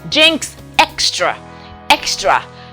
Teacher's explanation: in the word jinx and extra the k is there followed by the s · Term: k sound